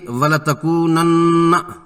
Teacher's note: واو ساکن اور اس سے پہلے کا کاف پیش والا ہے، اس سے واو مدہ ہے، اسے 2 حرکات لمبا کرنا ہے۔ نون مشدد پر نون کا غنہ کرنا ہے، ناک کے بانسے سے بن بناٹ کے ساتھ 2 حرکات کی مقدار میں زبان تالو سے چمٹی ہوئی اور ہونٹ کھلے ہوں گے